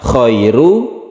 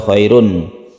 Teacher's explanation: maka ini bukan dibaca tanwin dia dibaca dhomah biasa